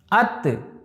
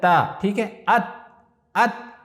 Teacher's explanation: इसी तरीके से फॉर एग्जाम्पल अलिफ ता ज़बर अत, देखिए अब यानी नो के ज़बान ऊपर वाले तालू से जहाँ खुरदुरा है वहाँ लगा रहे हैं हम